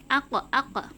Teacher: Makhraj huruf qaf keluar dari pangkal lidah bertemu dengan langit-langit mulut yang bagian lunak